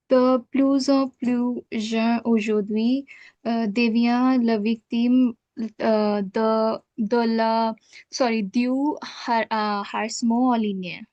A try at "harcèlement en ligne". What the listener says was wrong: again, the H will be silent as it is in French.